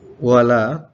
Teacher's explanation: ada bacaan mad tabi'i sehingga harus dibaca panjangnya 2 harokat